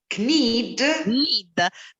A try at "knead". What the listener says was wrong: The K is silent. So need. Like the verb need, unfortunately.